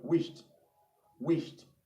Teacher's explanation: Now that word does not have a T in it, but in its pronunciation it has T because of the addition of ed. Okay, so we pronounce that word wished, wished.